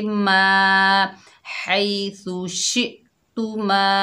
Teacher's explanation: मीम के ऊपर ज़बर, आगे अलिफ खाली है, ये अलिफ मद्दा है, एक अलिफ की मिकदार खींच कर पढ़ेंगे